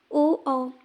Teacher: कंठ और ओष्ठ दोनों को मिलाकर हम इसका उच्चारण कर रहे हैं, इसलिए इन्हें कंठोष्ठ वर्ण कहते हैं।